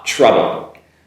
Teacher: “trouble” “ah” sound, not as strong as a “hot” “ah” sound